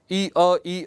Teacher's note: आप बार बार ई अ जितना तेज बोल सकते हैं उतना तेज बोलिए कि ये जब दोनों मिलेंगे ना तो आपको एक य सुनाई पड़ेगा। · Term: अर्धस्वर